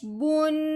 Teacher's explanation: اب غننے کا مطلب کیا ہے کہ ہم نے نون کا غنہ کرنا ہے تو یہاں نون کی بات کریں گے، ہم نے ناک میں سے آواز نکالنی ہے، منہ کو بند نہیں کرنا